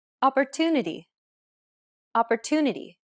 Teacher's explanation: The stressed syllable to in opportunity is pronounced longer than all the other syllables. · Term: stress-timed language